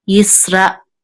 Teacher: you should have some kind of pause or breath right after Ra and before the Aleph. Because I know they say that Aleph is silent, but it's not really just silent.